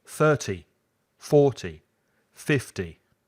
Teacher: when it has a 0, 30, 40, 50, 60, put the stress on the first part of the word.